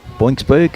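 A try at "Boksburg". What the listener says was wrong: Boxberg. There's no N in there. How did you get boinks? Box, as in Springboks. Boxberg.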